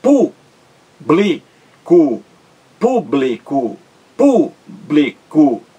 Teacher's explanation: três sílabas a sílaba mais forte é a antepenúltima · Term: proparoxítona